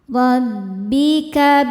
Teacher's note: ro dibaca tafkhim karena berharokat fathah, maka ro-nya ini dibaca tebal